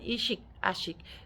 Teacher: O'g'iz shevalarida a tovushiga o'tish holati ham mavjud.